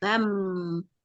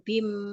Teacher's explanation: Tulisannya ban, tapi karena ini ada fathatain, kalau ketemu ba, maka cara membacanya mengubah suara tanwin tadi menjadi suara mim. Bam. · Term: iklab